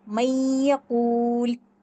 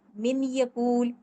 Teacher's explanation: اس کو ملانا ہے، اس میں داخل کرنا ہے، اس ورڈ میں نون ساکنہ کو یا میں داخل کرنا ہے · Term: ادغام